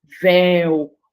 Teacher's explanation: E aí, essa palavra, como é uma monossílaba, eu não posso separar, não posso fazer a separação, ela vai ser acentuada. Véu, olha o E aí, tônico, tão forte, né?